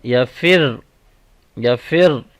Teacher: last letter کے پاس تشدید ہے، اس لیے اس کو سختی سے بھی پڑھیں گے